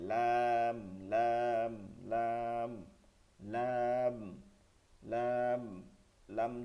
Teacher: জিহ্বার আগার কিনারা সামনের উপরের দাঁতের মাড়ির সঙ্গে অথবা গোড়ার সঙ্গে যেটা বলেন মাড়ির সঙ্গে অথবা গোড়ার সঙ্গে লাগাইয়া লাম উচ্চারিত হয়